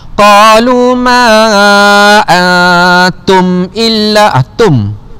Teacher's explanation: Kerana nun mati berjumpa dengan huruf ta, hukumnya ikhfa hakiki. Cara bacaannya dengung dengan kadar 2 harakat.